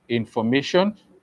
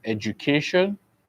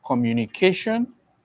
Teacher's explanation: the primary stress or the stress as you may call it will be placed at the penultimate syllable which simply means the second to the last syllable